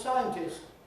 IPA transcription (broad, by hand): ˈsaɪəntɪst